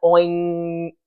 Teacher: We actually make a little ng sound in there, and it's a nasal sound